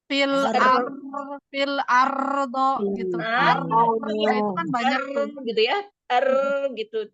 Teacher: karena dia terburu-buru melepaskan ujung lidahnya makanya getarnya jadi banyak jadi kalau mengucapkan huruf ro agak sedikit sedikit lebih lama er